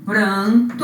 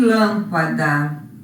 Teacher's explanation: o n aqui está presente apenas para nasalizar o ar é como se esse a n fosse ó uma vogal com